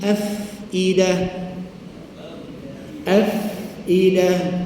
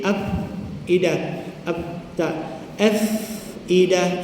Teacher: Makhraj fa ialah bibir bawah, 1 bibir je. Bibir bawah, bukan 2 bibir.